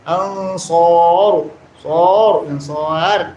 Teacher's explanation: sar mad arid ni sukun ra baca tebal